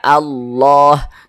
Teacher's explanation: huruf lam nah ini namanya huruf lam jalalah Jadi huruf huruf lam jalalahnya ini dibaca tebal